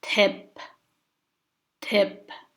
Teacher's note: Book is long, and we keep the consonant sound of the pa letter, so it becomes p. This consonant is p, like a labial sound. You close your lips when you say it.